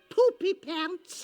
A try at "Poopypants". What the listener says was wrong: More or less, except the emphasis is on the poop.